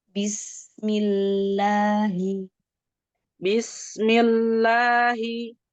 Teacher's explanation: Mil mil lamnya sukun lamnya ditipiskan